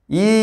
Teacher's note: তবে এই যে ইটা, এই ইটা আবার বলছে সম্মুখ, সামনের দিকে যাচ্ছে, আবার একটু ওপরের দিকে ঠেলে যাচ্ছে, তাই সম্মুখ উচ্চ। ইটা হচ্ছে সম্মুখ উচ্চ, মানে জিভটা একটু সামনের দিকে আর একটু ওপরের দিকে ঠেলে যাচ্ছে